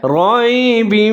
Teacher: را کے اوپر زبر ہے، اس کو موٹا پڑھیں گے